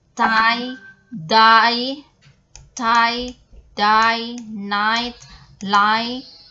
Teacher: Alveolar, tongue tip or blade, and the alveolar ridge, the tongue touching behind the upper front teeth